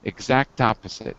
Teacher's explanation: probably for speaking fast we'll drop the k